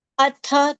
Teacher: tha is a mahapran sound. Hence more breadth and more strength.